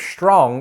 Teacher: it's called s backing because in the case of strong the S is articulated further back